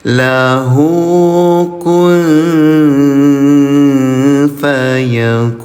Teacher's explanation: Kalau tadi menyamarkan bunyi tanwin, sekarang menyamarkan bunyi nun sukun. Ya, namanya ikhfa ayah bunda.